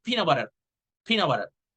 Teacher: Since you're saying it fast, you omit the T.